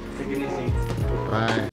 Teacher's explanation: The T in it is pronounced as a lingual flap T, meaning rather than releasing the T with a tip of the tongue and a stop of released air, it's pronounced similar to a quick D sound.